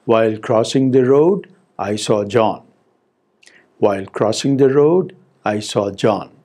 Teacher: the first part will be set with a rising tone and then we have a falling tone